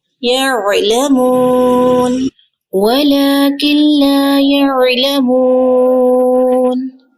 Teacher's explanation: عین کا مخرج آپ نے پڑھا نا، وسط حلق سے ادا ہوتا ہے